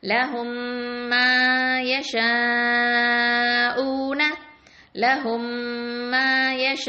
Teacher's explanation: மீம் சுக்கூனுக்கு அடுத்தது மீம் வந்தா இதுகாம் பண்ணணும் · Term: இதுகாம் ஷஃபவி